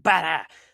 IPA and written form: buɾə (butter)